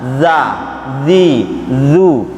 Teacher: Huruf za itu hurufnya keluar dari ujung lidah yang digigit. Di ujung lidahnya itu digigit oleh gigi serinya.